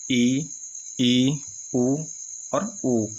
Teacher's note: संवृत में क्या होता है, मुंह लगभग बंद ही रहता है। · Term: संवृत स्वर